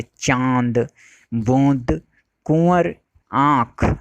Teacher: अनुनासिक के उच्चारण में वायु नाक और मुख दोनों से निकलती है